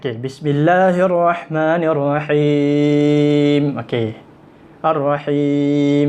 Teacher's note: Yang akhir tu ya sebelum mim kan, dipanggil mad arid li sukun. Dan mad arid sukun kadar harakat dia 2, 4, 6.